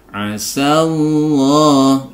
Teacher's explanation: diawali dengan harokat fathah, sehingga lafzul jalalahnya ini dibaca tebal Allah